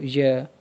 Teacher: The airflow moves relatively freely around the tongue. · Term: approximants